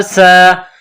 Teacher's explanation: سین کو باریک کرنا ہے، سیٹی کی آواز پیدا کرنی ہے